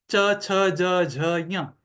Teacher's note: फिर क के लिए कंठ में होगा, फिर तालु के लिए जो जिह्वा का मध्य का जो भाग है, वो भाग उठकर तालु को स्पर्श करता है, उससे च छ ज झ ञ, ये ध्वनियां वहां से उच्चारित होती हैं।